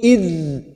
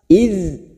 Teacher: Posisi ujung lidah kita berada pada gigi seri bagian atas. Id. Huruf dal ini sama seperti makhraj pada huruf bo dan huruf sa. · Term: huruf dal sukun